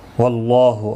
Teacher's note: اللہ کا لام زبر کی وجہ سے پر پڑھا جائے گا